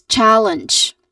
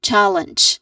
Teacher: Syllable stressed on first syllable. Challenge. Following this is a schwa sound, an, with a nasal sound.